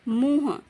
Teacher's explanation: इसमें म और छोटे उ और अनुनासिक की आवाज सुनाई दे रही है